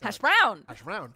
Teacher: it's an unstressed and then a stressed sound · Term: iamb